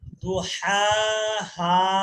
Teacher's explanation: দুহা, এর পরেরটা দেখেন, এর পরেরটা কিন্তু ছোট হা, প্রথমটা গলার মাঝখান থেকে হা, আর পরেরটা হালকা হা